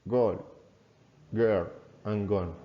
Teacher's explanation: it's called the voiced velar stop. This means that you use the back of the tongue to block airflow from the throat. The g sound is made through the mouth and it's voiced, which means that you vibrate your vocal cords to make the sound. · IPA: /g/